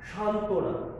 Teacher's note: এভাবে সান্ত্বনা, এই যে সান্ত্বনা শব্দের ত এর সাথে ব ফলা আছে, এই ক্ষেত্রে আমরা দেখো যে এখানে ব ফলাটা আসে নাই, অর্থাৎ ব এর উচ্চারণ এখানে হয়নি, অনুচ্চারিত